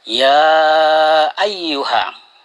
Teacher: Di situ ada mad tabi'i bertemu dengan hamzah dalam satu kata. Itu disebut mad wajib muttasil. Panjangnya 2,5 alif atau 5 harakah.